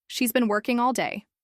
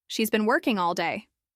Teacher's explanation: Notice how the stress falls on working and day.